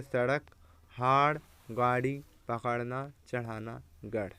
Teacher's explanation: इनका उच्चारण करते समय जीभ झटके से ऊपर जाती है। इन्हें उत्सृप यानी ऊपर फेंका हुआ व्यंजन कहते हैं, जैसे सड़क, हाड़, गाड़ी, पकड़ना, चढ़ाना, गढ़।